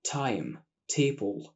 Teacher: طرف اللسان بيلمس سقف الفم وبعدها بيطلع صوت الت بنفخه كده صغيره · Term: التي الصريحه